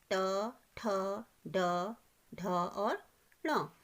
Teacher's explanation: मूर्धा मीन्स होता है जो आपके सामने के दांत है ना, उनके जो पीछे का हिस्सा है, जब आप बोलते हो ना इन वर्णों को तो आपकी टंग वहाँ पर टकराती है।